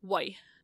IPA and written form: wʌi (Why)